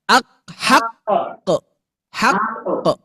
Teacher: Nah, berarti huruf qaf ketika dia memiliki tanda tasydid di ujung akhir bacaan, maka pantulannya harus diperkuat.